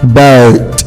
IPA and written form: bəʊt (boat)